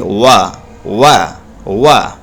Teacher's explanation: واو جب ادا کرتے ہیں تو اپنے ہونٹوں کو گول کرتے ہیں، یعنی پڑھیں گے وا، ہے نا، وا دونوں۔